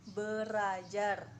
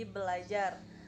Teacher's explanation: R yang pertama diperbedakan atau didisimilasikan menjadi L sehingga menjadi belajar.